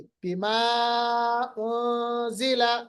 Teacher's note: نون ساکن کے بعد یہ زا آ رہا ہے، یہاں پر ہوگا اخفا، نون کی آواز کو چھپائیں گے